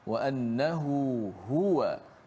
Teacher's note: Dua ha. Yang di tengah tu ada mad. A bermad dua harakat.